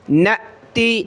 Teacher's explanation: او ننسیہا، ننسیہا نأتی، دیکھیں پچھلی ویڈیوز میں بار بار بتا چکا ہوں کہ حمزہ ساکنہ، یہ حمزہ اس کے اوپر یہ جزم آ گئی تو اس کو کہتے ہیں حمزہ ساکنہ۔ حمزہ ساکنہ کو پڑھتے وقت ہم نے جھٹکا دینا ہے۔